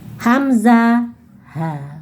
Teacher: pangkal Tenggorokan itu ada dua huruf, yaitu Hamzah ha